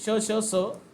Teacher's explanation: यांचा उच्चार करत असतानी मुखामध्ये घर्षण होते वायू होते आणि बाहेर त्यानंतर तो व्यंजन येतो म्हणून त्याला उष्मे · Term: घर्षक